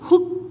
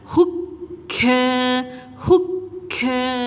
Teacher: Kita tahan bunyi suara kita dekat pangkal lidah, tahan dekat lelangit belakang. Huk, tahan sekejap baru lepaskan. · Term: Kaf ada sabdu